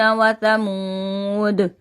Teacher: دال جب ساکن ہوتا ہے تو آواز پلٹ جاتی ہے